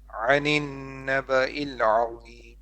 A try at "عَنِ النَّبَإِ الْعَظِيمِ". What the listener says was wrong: A little bit longer on the ghunna. عن النبأ العظيم.